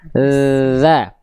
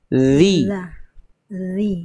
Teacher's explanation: Kalau zal, ujung lidah disentuhkan ke ujung gigi sari atas.